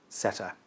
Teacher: the neutral vowel or schwa in the second syllable of setter. It just sounds like setter.